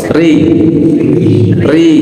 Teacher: sekarang ro itu dibaca tarqik atau tipis manakala dalam keadaan dia posisinya kasrah